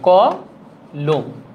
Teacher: দেখেন ক এর পরে অ উচ্চারিত হচ্ছে